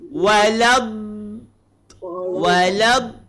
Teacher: jangan putar lidah. Kalau putar jadi walau, dia tak nak macam tu.